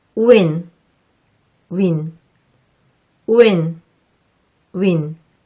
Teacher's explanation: 하지만 이 소리를 할 때 입술을 앞으로 충분히 내밀지 않으면 원어민의 귀에는 어색하게 들린답니다. 정확하게 발음하려면 입술을 앞으로 충분히 내민 상태에서 우를 발음하고 단모음 I의 소리를 내는 겁니다.